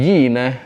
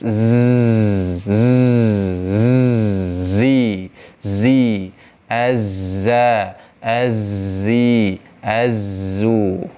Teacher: kasih dia gemuruh dan desis